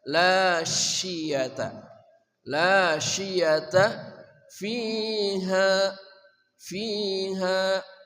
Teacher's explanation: shin namanya tafashi, menyebarnya udara dengan kuat di dalam mulut kita